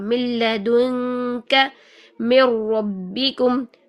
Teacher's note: جب نون کا ادغام بلا غنہ ہوگا تو وہاں پر آواز جو ہے وہ 50% نہیں ہوگی بلکہ نون کی آواز ختم ہو جائے گی